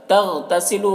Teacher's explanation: تغتسلو غین کو پر پڑھنا حروف مستعلیہ میں سے ہے